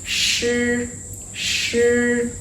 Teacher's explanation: Shi is also no expiration, so no strong air coming out like a puff.